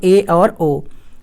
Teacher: जिन स्वरों का उच्चारण करते समय जिह्वा समृत स्वर से कम ऊंचाई पर उठती है उसे हम कहते हैं अर्ध समृत। इसमें 2 आते हैं, ए और ओ।